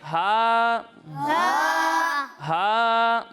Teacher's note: جب ہم ہا کی ادائیگی کریں گے تو اسے حلق کے درمیانے حصے سے پڑھیں گے